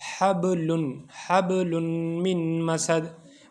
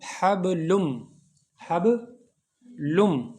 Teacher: نون کی آواز غائب ہو جائے گی، ہے نا. حبلم من مسد. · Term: ادغام